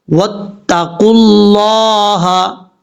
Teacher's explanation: لفظ اللہ سے پہلے قاف کے اوپر پیش ہے اس لیے لفظ اللہ کو بھی پر پڑھا جائے گا